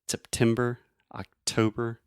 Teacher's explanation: exactly except timber so that is a true T except it I'm really aspirating which means I'm breathing air out of my mouth